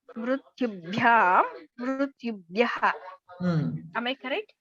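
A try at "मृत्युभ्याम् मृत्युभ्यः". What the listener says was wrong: Correct, but don't cut. You are pronouncing it very briefly. That ukara you are pronouncing it very briefly. Pronounce completely. No, mrityu mrityubhyam mrityubhyam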